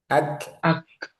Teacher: Jadi ke tadi kan siddah sama Hames ya. Nah, syiddahnya syiddahnya itu 60% hamesnya 40%. Jadi lebih dominan syiddah dulu. Jangan ak jangan langsung di lepas gitu ya.